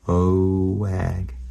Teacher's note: we weren't putting a W in between o and eh.